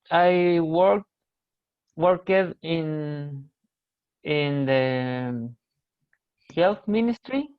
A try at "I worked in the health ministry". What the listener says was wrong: Health ministry, you worked, remember Yeah, please remember pronunciation of EDs. Okay, worked.